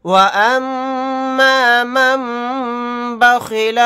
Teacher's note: میم کے اوپر تشدید ہے تو یہاں پر ہم غنہ کریں گے، نون ساکن کے بعد با آ گیا تو یہاں پر نون کو سائلنٹ کر دیں گے، پچھلے میم کو چھوٹے میم میں ملا کر غنہ کے ساتھ پڑھیں گے۔